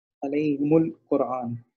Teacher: را جو ہے وہ موٹی پڑی جائے گی کیونکہ اس سے پہلے پیش ہے